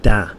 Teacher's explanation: a lot of Spanish speakers of English will say da instead of the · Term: substitution